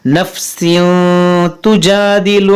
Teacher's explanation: यहाँ पर देखें तनवीन के बाद ता है, तो यहाँ पर इख्फा करेंगे, यानी नाक में आवाज़ जाएगी